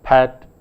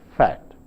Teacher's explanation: the plosive sound p, which is a bilabial sound, and the fricative sound f, which is a labiodental sound, are sometimes not distinguished in the speech of some speakers.